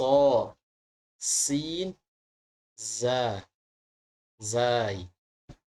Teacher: huruf Sin dan Za ini keduanya lidahnya tidak mengangkat karena mempunyai sifat istifal